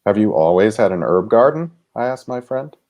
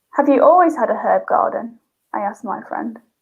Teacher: the american english kind of steadily goes up and up and up and up through the question and the british is almost flat and almost drops at the end